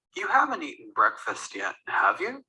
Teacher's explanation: if you use a rising intonation in the tag, that means you're not sure